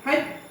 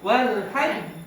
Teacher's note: ingat tasydid itu kan sama dengan dua huruf. Jadi hajj jangan langsung kokoh dulu. Nanti kokohnya di jim yang kedua. Hajj ini ditahan di sini.